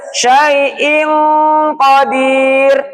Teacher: nunnya masih hidup tapi masukkan ke tenggorokan eh pangkal lidah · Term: ikhfa hakiki, Ikhfa hakiki